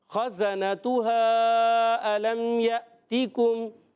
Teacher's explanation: ہم نے زا پڑھنا ہے، سیٹی والا ہے